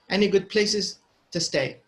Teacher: any is not stressed so it's going to be pronounced very quickly